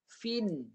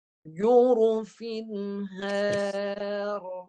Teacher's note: Jelaskan tanwinnya tanpa dengung. Jadi kalau fa ni, baris tanwin di bawah bacanya fin. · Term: jelaskan tanpa dengung